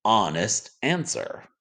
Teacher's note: the word honest starts with an h but the h is silent so the first sound we hear is ah